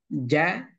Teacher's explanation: kalau ja dia tempelkan tengah-tengah lidah kita ke langit-langit